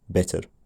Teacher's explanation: often rotic at the end of a word even if no other word follows